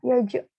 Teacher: bertemunya ya yang berharokat kasroh dengan jim yang disukunkan. Jadi dibacanya juga mantul